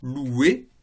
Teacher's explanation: si vous prenez le verbe il loue et que vous faites l'infinitif, louer, eh bien vous avez un W qui s'insère entre le OU et le E